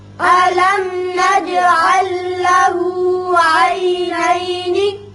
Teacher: میم پر اظہار شفوی، جیم کی صفت قلقلہ، یہاں لام ساکن آگے لام سے ملائیں گے، ادغام اس کا بغیر غنہ ہوگا